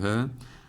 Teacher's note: H harfinin boğazımızın en altından çıkıyordu